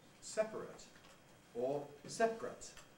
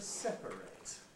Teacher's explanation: Therefore, we can compress before it, and we get the loss of a syllable, so that separate is usually in fact said as 2 syllables. But the verb to separate has to be 3 syllables.